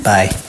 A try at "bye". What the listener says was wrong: You gotta elongate the E.